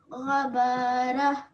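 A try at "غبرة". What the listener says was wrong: But don't prolong this. There's no alif after the ba. They all have the same amount of, the same amount of length. 1 second, 1 second, 1 second.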